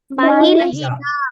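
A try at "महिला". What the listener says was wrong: మహిళ. దీర్ఘం తీయాలి నాన్న. మహిళ.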